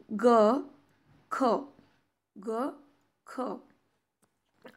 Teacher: आपल्या जिभेची सगळ्यात पाठची बाजू जी आहे ती आपल्या घशाला अडली जाते आणि मग जो आवाज निघतो तो आहे मोलार प्रकारामधला.